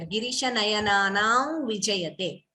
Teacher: Girisha nayananam vijayate. So Anuswara followed by V. You could optionally give the nasal tone there.